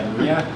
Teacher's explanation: His voice is palatal nasal. Yeah, palatal nasal because you're hitting your palate, but it's coming out of your nose